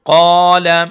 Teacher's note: क़ाफ को मोटा करेंगे और एक अलिफ के बराबर खींच के पढ़ेंगे